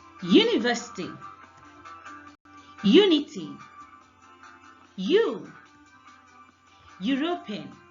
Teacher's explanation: Even though these words begin with U and E respectively, the first sound in all of them is the consonant Y. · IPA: /j/